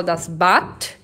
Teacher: o D no final tem som de T